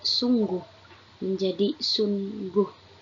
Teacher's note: Pengucapan satu bunyi ng dibaca dua suara nun dan ghin.